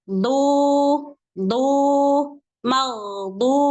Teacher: pada huruf dod, dia makhrajnya ada di hafatul lisan, bukan di ujung lisan.